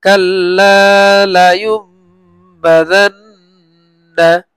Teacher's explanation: নুন সাকিনের পরে যখন বা আসে, তখন মিম দ্বারা পরিবর্তন করে পড়তে হয়। এই নুনটাকে এই মিম দ্বারা পরিবর্তন করে পড়তে হয়, মানে নুনের জায়গায় আমরা এই মিম পড়বো।